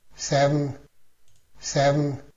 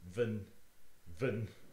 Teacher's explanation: This little line underneath an N means that it's a syllabic N, as in seven